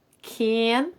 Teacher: Es una A frontal bastante abierta, pero no tan abierta como la nuestra. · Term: la A frontal inglesa